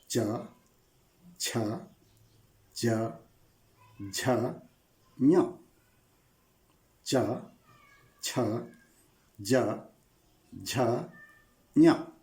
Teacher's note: देखिए ऊपर जो तालु है ना, अग्रभाग तालु को स्पर्श कर रही है। तो च वर्ग के वर्णों का उच्चारण स्थल है तालु। यहां से ये सभी उच्चारित होते हैं। · तो यह है च। देखिए ऊपर जो तालु है ना, अग्रभाग तालु को स्पर्श कर रही है।